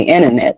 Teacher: Because you put the stress on in, really the other syllables are weaker. So then that's why some people say internet.